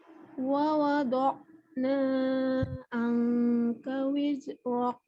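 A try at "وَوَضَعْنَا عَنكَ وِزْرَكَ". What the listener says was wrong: Huruf zainya belum. Nanya kepanjangan. Wa wada'na anka wizrak.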